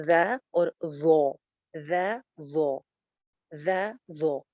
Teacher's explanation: ایک ہی جگہ سے نکلتے ہیں دونوں، زال بھی اور غو بھی، نیچے والے دو دانتوں کے کنارے سے بغیر سیٹی کے. سوری، اوپر والے دو دانتوں کے کنارے سے بغیر سیٹی کے. لیکن اس میں ڈفرنس صرف اتنا سا ہے کہ غو جو ہے یہ موٹی پڑی جاتی ہے، زال باریک ہے.